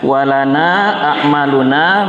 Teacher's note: Lana ini panjang nanya berjumpa dengan hamzah di lain kata di depannya itu maka dibaca pisah dan panjang dua alif sampai tiga alif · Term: Mad jaiz munfasil